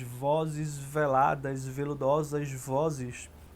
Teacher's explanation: Ele repete muito o V e o Z, em que o ar passa de maneira mais suave pela boca, né, essas consoantes, o V em especial, e dá uma noção, é meio como se a gente estivesse sentindo na boca a ideia do toque do veludo, que é algo macio, algo que a gente quase não sente, né, que é agradável ao toque.